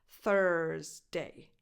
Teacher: This is probably the most difficult one for Italian speakers. So you start with a voiceless th, as in the word think, and then you say ers, like hers, but without the h.